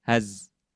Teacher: ketika kita melafalkan huruf zai harus dibaca secara jahar. Jadi tertahan nafas. Jadi az. Nafasnya tertahan.